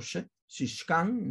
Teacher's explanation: La SH para representar el sonido, el fonema postalveolar fricativo sordo